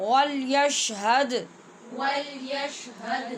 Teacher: واو کو گول کرنا نہیں بھولیے اور دال پہ قلقلہ بھی نہیں بھولنا.